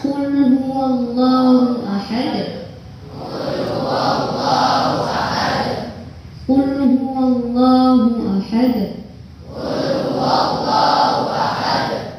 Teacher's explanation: Coba mulai sekarang qalqalahnya dirubah ya, suara hurufnya condong ke harokat fathah.